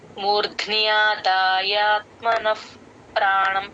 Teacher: విసర్గ F sound లాగా చెప్తాము ప ముందు ఎప్పుడు విసర్గ వచ్చిన ఎఫ్ సౌండ్